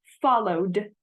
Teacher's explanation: the Ed can make a D sound as in follow followed